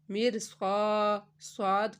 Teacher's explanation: را ساکن سے پہلے زیر اصلی ہے اور را ساکن کے بعد حروف مستعلیہ ہے، تو را ساکن کو پر پڑھیں گے